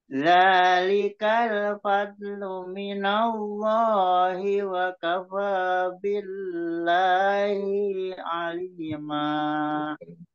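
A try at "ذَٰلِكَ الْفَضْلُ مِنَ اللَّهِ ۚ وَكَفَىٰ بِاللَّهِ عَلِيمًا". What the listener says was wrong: Ikut panjang lagi hi-nya, Pak. Malah ikut panjang lagi hi-nya.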